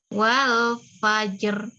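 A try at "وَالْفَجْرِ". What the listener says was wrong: Ro-nya tebal. Jadi ro-nya tebal. Nggak boleh tipis. Nggak boleh fajr. Nah, tipis banget itu. Jangan. Lidahnya jadi turun.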